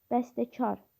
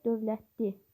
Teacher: Bəstəkar vurğu sondadır, dövlətli vurğu sondadır. Nəticədə hər ikisində vurğu üçüncü hecadadır.